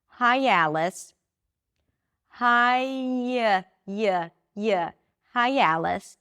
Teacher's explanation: I add a y sound.